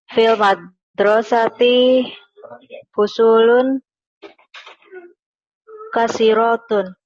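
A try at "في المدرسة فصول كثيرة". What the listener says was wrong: Salah panjang pendeknya. rotun. I-nya panjang.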